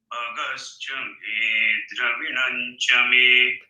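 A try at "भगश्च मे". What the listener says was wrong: Bha a little harder. Mahaprana. Bha. Bha. Bhagascha me.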